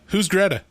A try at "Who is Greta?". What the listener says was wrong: No, you're not getting my inflection. inflection here is, Who is Greta?